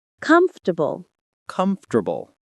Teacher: We drop that middle syllable.